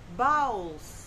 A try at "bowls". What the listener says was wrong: No, not bowels. Bowls. You're confusing your balls, your bowels, and your bowls.